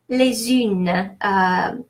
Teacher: the final S sounds Z because I'm making the liaison, the linking with the vowel from the next word. Une, nothing specific there.